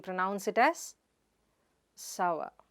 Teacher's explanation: It is not soor sor, but sa-wuh. The /r/ is silent there.